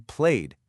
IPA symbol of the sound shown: d